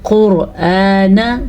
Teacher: حمزہ کو آرام سے نرمی کے ساتھ پڑھنا ہے، لیکن لمبا بھی کر کے پڑھنا ہے